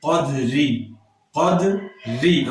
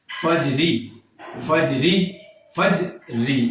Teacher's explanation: را کے نیچے زیر ہے تو را آٹومیٹیکلی باریک ہو گئی، اس میں ہمیں اسپیشل اہتمام اور تکلف کرنے کی حاجت نہیں پڑی۔